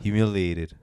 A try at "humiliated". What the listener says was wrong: You're adding like a little you. Humiliated.